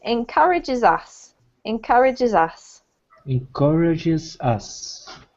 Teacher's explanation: What a native speaker will do is just connect up, if you can see, encourages finishes with a consonant, and us starts with a vowel. So whenever you hear a native speaker read, they'll squish the two together. Instead of saying encourages us, they'll say encourages us.